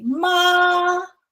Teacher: Now, the first tone, it is basically flat and high.